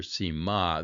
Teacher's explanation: the accent is on the last syllable